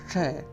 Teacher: इस स को मूर्धा, मतलब आपके मसोड़ू से थोड़ा सा ऊपर लेकिन तालु से नीचे आपकी जिह्वा स्पर्श करेगी